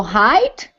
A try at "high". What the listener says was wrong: So, very close. So high. Just high. We just get rid of the T sound.